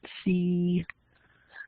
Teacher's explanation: [Music] So for instance the C is a high front vow. Your lips are not rounded. The tongue is to the front. C and your first format is lower because your mouth is narrow.